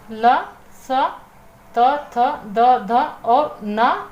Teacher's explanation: दंतीय में आपकी जीभ आपके ऊपर वाले दांतों को स्पर्श करती है